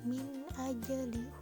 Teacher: huruf jim sukun di tengah kalimat disebut dengan qalqalah sukro